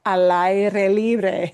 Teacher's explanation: it's going to sound like one long word, even though it's three words